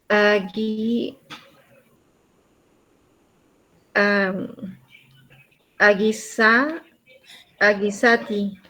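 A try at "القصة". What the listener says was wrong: Otra vez, el lam tiene sukun. Entonces tiene que pronunciarla. Al-qui. Qui. Al-qissa.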